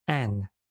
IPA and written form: æn (an)